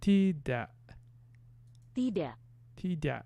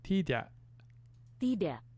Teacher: There's like almost like palatalization on that D.